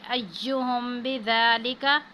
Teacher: میم ساکن کے بعد با آ رہا ہے، تو یہاں پہ ہم اخفا میم ساکن کی صورت میں غنہ کریں گے